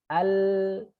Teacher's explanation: suara itu akan belok ke kanan dan kiri dari tengah ya dari tengah membelah lidah yang naik ke atas ke kanan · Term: Insyirah